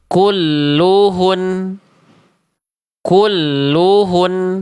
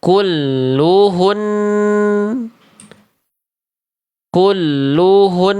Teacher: Tapi harus ditahan. Karena nun tasydid ada gunnah. 2 harokat, tahan dulu.